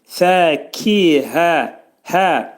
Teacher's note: Hə hərfinin məxrəci boğazın aşağısındadır. Heç vaxt bunu gərək boğazın hə boğazın ortasına salmaq olmaz.